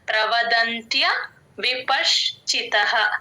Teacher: త ముందు వచ్చే సున్నా పదం మధ్య వస్తే యూజువల్ గా ఎన్ సౌండ్ లాగా పలుకుతాం